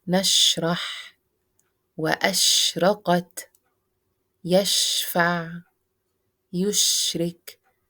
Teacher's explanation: The spreading of the exhale is التفشي or spreading in this sheen.